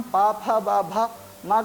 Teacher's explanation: जब हम ओष्ठ को दोनों ओठों को आपस में नहीं मिलाते हैं तब तक हम पा, फा, बा, भा, माँ का उच्चारण नहीं कर सकते हैं।